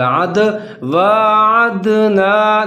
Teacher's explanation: یہاں پر ہم قلقلہ کریں گے، دال حروف قلقلہ میں شامل ہے